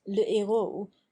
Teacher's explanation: the effect of the aspirate is simply to keep the 2 vowel sounds apart, so as to pronounce le héros with a slight hiatus between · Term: aspirated h